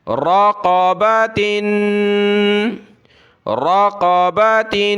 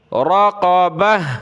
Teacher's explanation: را زبر را، قاف زبر قا، رقا، با زبر با، رقاب، تا دو زیر تن، رقابت رقابت، جب رکے وقف کیا تو رقابہ، ہا بنا دیا گولتا کو وقف میں